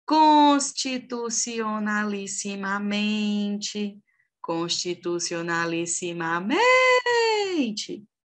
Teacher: tanto em constitucionalissimamente quanto na palavra casa, a sílaba tônica é a penúltima